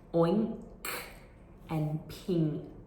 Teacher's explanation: /ŋ/- ng- lifts or raises—uses—the back of the tongue · that “n-k” is not clearly articulated like an /nk/. It's actually like an /ŋ/ sound. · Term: ng sound, NG sound